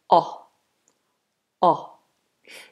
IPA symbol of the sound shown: ɒ